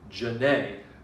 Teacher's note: But I have a friend whose name is Janae, and you say ja, you don't stress the ja part, you stress the a part